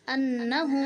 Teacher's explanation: نون کو سختی سے پڑھیں گے کیونکہ نون کے اوپر شد ہے اور مشدد حرف کو سختی سے پڑھا جاتا ہے۔